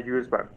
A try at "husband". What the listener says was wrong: Husbands. The H in English does have a sound. Husband.